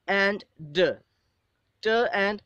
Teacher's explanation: the tip of the tongue reaches the alveolar ridge, it touches the alveolar ridge, and the air passage is blocked with the joining of the tip of the tongue and the alveolar ridge. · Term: alveolar plosives, alveolar plossives